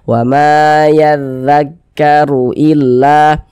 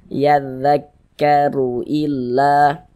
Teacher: huruf ra memiliki harokat dhammah juga dibaca tabkhim, dibaca tebal sehingga pangkal lisan kita terangkat ke atas ketika kita mengucapkannya